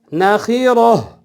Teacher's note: وقف کی صورت میں گول تا پہ جب ہم وقف کریں گے، رکیں گے، سانس ٹوٹے گا تو اس کو ہا میں تبدیل کریں گے، یعنی اس کو ہا پڑھا جائے گا۔